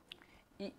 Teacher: इ ई के उच्चारण में किसका टच हो रहा है? तालु। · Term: तालव्य